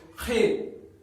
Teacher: یہ جو ہمارا حلق ہے اس سے ہمیں تھوڑی موٹی آواز نکالنی ہے. اور یہ خے حلق سے آواز آنی چاہیے